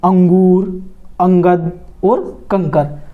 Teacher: ध्वनि जब नाक से निकलती है तो वे क्या होते हैं? अनुस्वार।